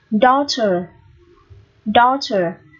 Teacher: Cái chữ AU này được phát âm là âm O dài. Daughter. O dài ký hiệu là C ngược hai chấm.